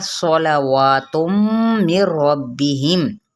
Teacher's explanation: واو پہ کھڑا زبر ہے، ایک الف یا 2 حرکت لمبا